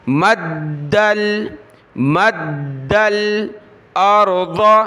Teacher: वहुवल्लज़ी मद्दल अर्द, मीम को दाल के साथ, दाल को लाम के साथ, दाल को सख्त करेंगे तशदीद की वजह से